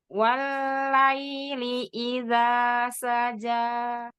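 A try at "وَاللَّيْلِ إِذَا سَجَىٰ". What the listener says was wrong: Enggak walai. Walai. Tapi walaili. Bukan pakai suara hidung. Walaili. Walaili idza saja. dipencet hidungnya Mi, di sini tidak ada huruf gunnah ya, jadi bisa ketahuan coba.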